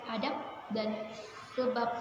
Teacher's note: fonem B pada silaba akhir kata sebab dan adab diucapkan P, adab, dan sebab yang persis sama dengan pengucapan fonem P pada atap dan usap. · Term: Netralisasi